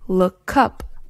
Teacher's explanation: When this happens, we pronounce the words as if the consonant sound has moved from the end of the first word to the beginning of the next word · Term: consonant vowel linking, consonant-vowel linking